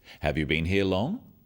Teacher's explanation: Questions that start with have you are yes/no questions, so they have a rising tone